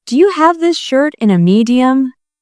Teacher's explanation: The stress is on have, shirt, and medium.